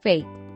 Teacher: level intonation, which marks a bold or sarcastic attitude